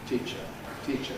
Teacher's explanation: And it's got rhythmic clipping because of the unstressed syllable, the uh that follows teacher. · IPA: [ˈtiːʧə]